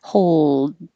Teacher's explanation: So think of it as saying whole so that you finish with the L, hold the L for a longer duration so it can be heard, and then finish with the D. And you don't have to release the D, hold. You're just sealing off the sides of your mouth so the air can't get out the front.